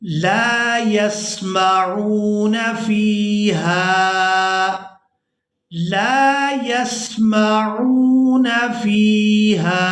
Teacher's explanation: عین کو واو مدہ کی وجہ سے کھینچ کر ادا کیا جائے گا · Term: یائے مدہ